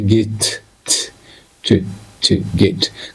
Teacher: Jidduu naannoo arrabaa kanatu naannoo ilkee kan tuqa. Ingiliffatti garuu tiin bakki itti uumamtu alveolar ridge jedhama. Iddoo ilkeedha xiqqoo ol siqee jirutti fiixee arrabaatu naannoo san tuqa jechuudha.